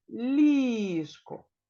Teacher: в цьому слові два Склади і наголошеним є перший склад